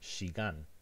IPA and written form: ʃigan (shigan)